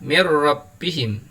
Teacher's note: kebetulan di sini ada nun sukun bertemu dengan roh cara membacanya suara nun sukun nya lebur ke huruf ro tetapi tidak disertai dengan suara mendengung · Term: Idgham bilagunnah, idgham bila gunnah